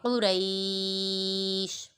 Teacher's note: یہاں ساکن سے پہلے زبر یا لین ہے، اس کے بعد شین کو وقف کی وجہ سے ساکن کر دیا تو ادھر مد لین عارض ہوگا